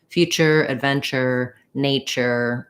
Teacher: this is actually pronounced as a ch and an er · my tongue does start in the t position and drop to the sh position it's all one sound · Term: ch sound